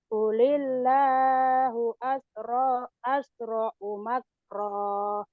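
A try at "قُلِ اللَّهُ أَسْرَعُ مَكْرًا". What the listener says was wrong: Qulillahu asra'u makra. Jangan makroh ya. Makra.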